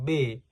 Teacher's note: Kemudian B disuarakan, pita suara bergetar